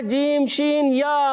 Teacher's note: زبان کا درمیان اور تالو کے درمیان سے ادا ہوتا ہے